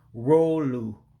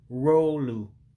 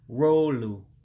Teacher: those two o's are literally what they are in english o but you drag it out because you got two together and the u is is basically u so this is pretty